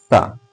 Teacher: ठीक है, जैसे बोलिए सा, जैसे सा बोलेंगे वैसे ही आपके दोनों दांत के बीच में आपकी जीवा जाकर टच होगी। ठीक है, इसलिए दंत वर्ण है।